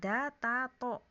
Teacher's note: sama-sama makhrajnya di pangkal gigi seri atas